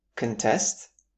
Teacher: the shift is on the second syllable to make the verb